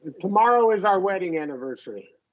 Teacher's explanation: A lot of Americans reduce this one, the pronoun our, to R. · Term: reduction